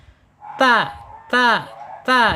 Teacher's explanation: Ta panjangnya dua harakat, satu alif atau dua ketukan, ya. Kemudian ta secara makhraj ada di alisan yaitu ujung lidah menyentuh pangkal gigi seri atas